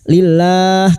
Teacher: Lam jalalah yang didahului kasrah dibaca tarkik atau tipis · Lam jalalah yang didahului kasroh dibaca tarkik atau tipis. Lillah, karena kita memilih wakaf di sini maka 4 harokat kita panjangkan dan kita mengulang pada kalimat fa'anna lillahi.